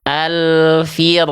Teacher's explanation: Ro sukun yang barusan adalah salah karena pangkal lidahnya naik.